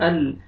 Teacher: نون ساکن کے بعد حروف یرملون میں سے لام آ رہا ہے، ادغام کریں گے بغیر غنہ کے ساتھ